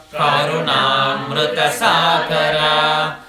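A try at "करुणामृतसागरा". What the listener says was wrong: So there's no holding of im. It's not Karunamrita. So the holding is coming, okay? You don't hold im. So you do like Karunamrita, Karunamrita, okay? Don't go Karunam.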